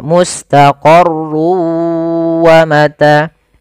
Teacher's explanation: Cara pertama, langkah pertama, masukkan tanwin ke huruf waw sehingga suara n-nya hilang. Tinggal ganti wa, maka mustaqarrun awalnya menjadi mustaqarru karena dia bertemu waw masuk ke waw. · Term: idgham bi gunnah